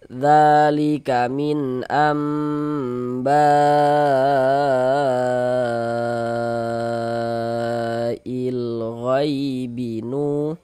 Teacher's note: mad wajib muttasil panjangnya itu wajib dibaca minimal panjangnya 4 harokat. Jadi paling pendeknya mad wajib itu dibaca dengan 4 harokat, nggak boleh dibaca dengan 2 harokat, 4 harokat, 4 sampai dengan 5 harokat seperti itu.